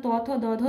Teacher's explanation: এবং দন্তস এগুলি হচ্ছে দন্ত বর্ণ কারণ কি না এগুলির দাঁতকে জীব দাঁতকে স্পর্শ করে উচ্চারিত হয় তাই এগুলিকে বলা হয় দন্তবর্ণ